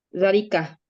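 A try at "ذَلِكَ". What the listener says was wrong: Iya, dzalika tolibun karena muzakkar ya,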